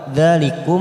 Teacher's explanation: Dzalikum, dza fathah fathah berdiri 2 harokat. Dzalikum mim sukun idhar safawi kita baca jelas.